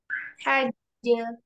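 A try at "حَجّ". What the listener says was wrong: Jangan dijeda.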